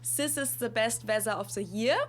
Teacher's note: English th many many Germans can't really pronounce that and instead we'll either replace the th with an S or z sound